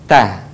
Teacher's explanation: sederhananya ujung lidah disentuhkan dengan gusi-gusi seri atas. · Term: huruf ta